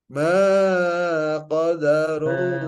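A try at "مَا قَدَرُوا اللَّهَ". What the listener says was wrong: Makoda. Jangan kepanjangan. Makoda.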